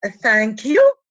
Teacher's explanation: That N, which is alveolar, becomes as a velar. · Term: velarization